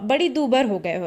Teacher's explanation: बिहारी की बोलियों में ला जो है वह र में परिवर्तित हो जाता है